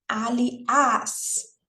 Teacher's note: a sílaba tônica é esse as que tá no final